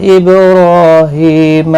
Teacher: با ساکن پر قلقلہ ہوگا، را پر پڑھا جائے گا اور کھینچا بھی جائے گا ایک الف کی مقدار کے برابر، کھڑی زبر کی وجہ سے۔